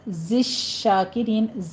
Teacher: زے میں بھی سیٹی کی آواز آئے گی، شین میں بھی آپ نے تفشی کرنی ہے